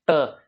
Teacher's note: देखेंगे कि आप जीभ आपकी एक बार पहले ऊपर उठेगी और उसके बाद मूर्धा या बीच के जो भाग है उसको स्पर्श करके झटके से नीचे आएगी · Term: उक्षिप्त व्यंजन